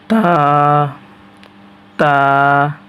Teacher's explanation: সামনের দুই দাঁতের গোড়ার সঙ্গে জিহ্বার আগা লাগবে। তা তা তা তা সামনের দুই দাঁতের আগায় জিহ্বার আগা লাগবে।